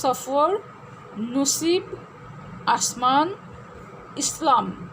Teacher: বিদেশি শব্দের ক্ষেত্রে দন্ত স এর উচ্চারণ সাধারণত দন্তমূলীয় হয়ে থাকে